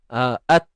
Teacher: hujung lidah ditekan pada gusi sebelah atas ataupun pada bahagian pangkal gigi. Okey, tempat tumbuh gigi tu. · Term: tempat keluar ta